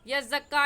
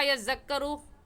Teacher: ज़ा सख्ती से अदा होता है और ज़ाल नरमी से अदा होता है, नरम हुरूफ में से है।